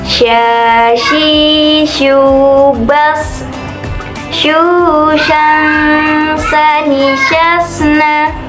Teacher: Dalam melafalkan huruf sya ini, kita harus menyentuhkan tengah lidah dengan langit-langit, diucapkan mengalir udaranya dan nafasnya menyebar atau disebut dengan tafashi.